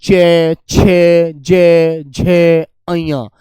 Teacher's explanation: च वर्ग संघर्षी व स्पर्शी होता है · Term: तालव्य